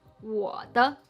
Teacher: They are just short, light, with a lower tone following the first, the second, and the fourth tone. As I said, the third tone is the lowest sound that we almost throw up, so the neutral tone followed cannot be lower than it, and instead it's pronounced a bit higher.